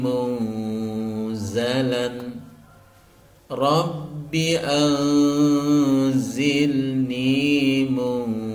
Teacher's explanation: lagi munzala munzala jadi sama-sama disamarkan dan disertai dengan dengung yaitu karena ada nun sukun bertemu dengan Za maka wajib dibaca ikhfa Hakiki cara membacanya disamarkan disertai dengung